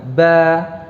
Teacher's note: pengucapan ba itu seukuran dengan pengucapan 2 ba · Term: 2 harakat